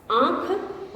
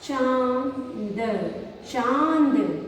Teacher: आधा नाक से आ रहा है, आधा मुंह से आ रहा है, जिसकी वजह से ऐसे लग रहा है हम जब इस शब्द को नाक और मुंह दोनों से पढ़ रहे हैं, इसलिए हम इसे अनुनासिक भी कहते हैं।